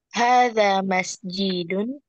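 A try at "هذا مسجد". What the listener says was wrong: Hadza masjidun. Tidak ada kata tanya, intonasinya.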